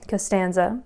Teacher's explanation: that has three syllables right costanza and the second syllable is the one that has the natural accent